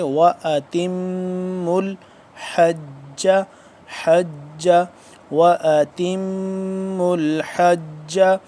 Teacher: میم مشدد ہے، اس پہ غنہ کریں گے